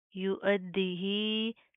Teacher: ہا کھڑی زیر مد ہی یو ادی ہی. کھڑی زیر ہے, مد ہے, تو اس کو لمبا کریں گے, کھینچ کر پڑھیں گے. یا اور دال کے اوپر شد آ رہی ہے, تو ان کو سختی سے مضبوطی سے جما کر پڑھا جائے گا.